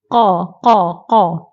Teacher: pangkal lidah diangkat ditekan ke Pangkal langit yang berdekatan dengan anak tekak okey jadi makhraj bagi Q ialah alisan iaitu di Pangkal lidah